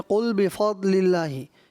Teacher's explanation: ضاد حرف مستعلیہ کا اس میں پر کرنا تھا